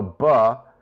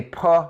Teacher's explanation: So put your hand in front of your mouth and go buh. You'll notice that the buh sound, there's less air than puh. If you say puh like in P.